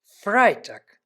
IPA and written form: ˈfʁaɪtaːk (Freitag)